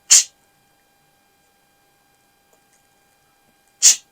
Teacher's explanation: the tip of your tongue must be curled up, touching the hard palate and then releasing a little airflow.